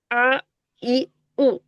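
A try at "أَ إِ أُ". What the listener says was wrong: হ্যাঁ, আচ্ছা,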